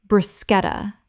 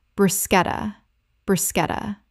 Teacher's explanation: The CH makes a K sound in Italian, and this word kept its Italian pronunciation in English.